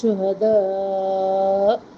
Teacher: آواز حمزہ پہ جھٹکے کے ساتھ رکے گی اور یہاں پہ مد آ رہی ہے مد متصل